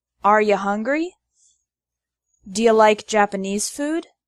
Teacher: I'm only writing wrote as rota to emphasize the literal pronunciation. The word you often becomes ya in informal spoken English.